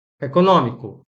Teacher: a forte é a antepenúltima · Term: proparoxítonas